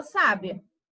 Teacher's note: na penúltima sílaba a gente vai saber que é uma pessoa sábia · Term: acento